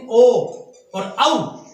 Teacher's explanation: कंठाष्टम यानी कंठ और होष्ट से ओदोत्ता, कंठोष्टम यानी ओ और औ, इसका उच्चारण स्थान कंठ और होठ से किया जाता है